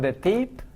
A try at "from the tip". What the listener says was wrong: It's I. It's not from the teep. from the tip.